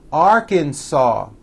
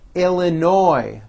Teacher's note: the final s is silent